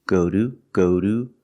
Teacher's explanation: sounds like the word do but it's a fast d ude we pronounce the word to as do when it's after a vowel and before the schwa